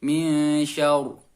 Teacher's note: ro tafkhim dan ditahan sejenak. Contoh bacanya min syarri, cara membacanya min syar. Jadi ro-nya harus tebal.